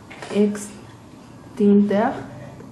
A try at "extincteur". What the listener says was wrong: Extincteur. Sí. 4 sobre 5 juntos. Porque el sonido A no estaba bien.